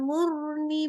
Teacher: jangan mur tipis jangan, tapi mur tetap di tafkhim